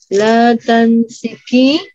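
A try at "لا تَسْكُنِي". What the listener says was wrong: La tasiki. Nggak ada nun ya, Bu? La tasiko.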